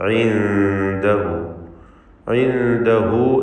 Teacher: ഇഖ്ഫ ഹഖീഖി നൽകി, മറച്ച് മണിക്കുക, വ്യക്തമാക്കി മണിക്കണം. ഇൻദഹു, ഇൻദഹു എന്നതിലെ ദമീറിന് മദ്ദുസ്സിലത്ത് സൂറ നൽകി ദീർഘിപ്പിക്കുക, രണ്ട് ഹറക്കത്തിൻ്റെ അളവിൽ.